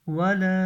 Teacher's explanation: آگے واو زبر و، لام الف زبر لا، ولا، اس کے اوپر مد منفصل آئی ہے. ہم مد جو ہے نا دوسرے کلمے میں آ رہی ہے، اس لیے اس کو 3 الف کے برابر کھینچ کے بولیں گے